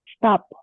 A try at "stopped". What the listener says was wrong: stopped. This one has the T at the end, okay? Even though it's ED, it has more of a T at the end. So stopped, stopped.